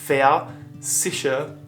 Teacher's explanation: in german the v comes off more like an f